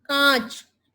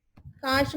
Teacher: तो ये आप देखिए कां के ऊपर चंद्र बिंदु, तो चंद्र बिंदु कां, नाक और मुंह दोनों से हवा आ रही है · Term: अनुनासिक